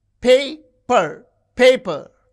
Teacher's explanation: You can see the first syllable is stressed